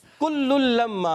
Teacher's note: कुल्लुल लम्मा या कुल्लुल में लाम के बाद जो दूसरा लाम आ रहा है इसमें होगा इदगाम बिला गुन्ना